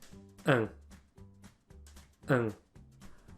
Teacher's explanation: which despite the IPA symbol is actually a nasalized A sound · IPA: [ɛ̃]